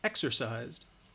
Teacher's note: even though it's spelled with an S it's the Z sound that it's voiced